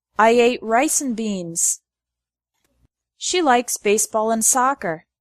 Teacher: The word and often becomes n.